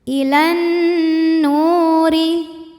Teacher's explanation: Huruf ra dibunyikan secara tarqiq karena berbaris kasroh, maka dibacanya tipis · Ilan nu mad tabi'i dhahiri karena nun berharokat dhammah bertemu waw sukun, maka dibaca panjang 2 harokat